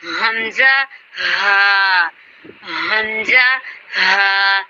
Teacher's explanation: حمزہ اور ہا یہ اخری حلق سے ادا ہوتے ہیں، آخر والے حلق سے ادا ہوتے ہیں.